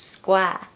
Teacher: if you want a British accent, don't pronounce the R in square, so it's just square.